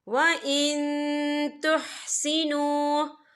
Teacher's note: یا دیکھیں وَإِن یہاں نون ساکن ہے، نون ساکن کے بعد جو ہے تا آ رہا ہے، اور تا جو ہے اکفا کا ورڈ ہے، تو ہم یہ اکفا کریں گے، نون ساکن کی آواز کو ناک میں چھپائیں گے